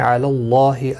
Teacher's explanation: اللہ کا لام زبر کی وجہ سے موٹا پڑا جائے گا، پر پڑا جائے گا۔ اس کے اوپر کھڑی زبر بھی ہے، ایک الف کی مقدار کے برابر کھینچ کر پڑھیں گے۔